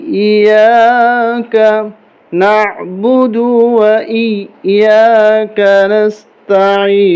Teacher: یہاں سختی کے ساتھ پڑھیں گے، یا کے اوپر تشدید ہے